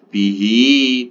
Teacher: Jadi ini dibaca panjangnya cuma dua harakat karena hak damirnya ini berharakat kasr ini bertemu dengan huruf selain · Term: mad sillah khasirah